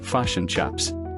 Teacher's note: a New Zealander will shift the I to a U, pronouncing it like fish and chaps.